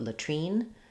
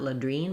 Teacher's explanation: So we have a schwa, an sound for the first syllable, and then the I says the E in this word, doesn't follow the rule of I says its name, so it's not latrine, but latrine. Because we're stressing on this second syllable, the T does come out, so not ladrine, but latrine. We do have a burst of air there